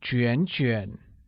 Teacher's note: the same word pronounced twice with a falling rising tone on A, like 卷卷